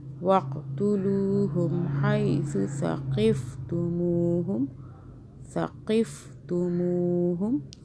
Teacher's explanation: ثا کو سافٹ پڑھنا ہے، قاف کو موٹا پڑھنا ہے